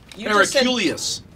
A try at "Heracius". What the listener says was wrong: There's no L in there. But you can add an L if you want.